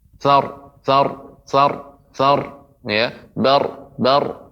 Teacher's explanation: Adapun ra ya, ketika kita tebalkan itu tidak memantul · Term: ra tafkhim